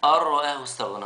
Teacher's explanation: مش هننطق النون لأن النون مش عليها حاجة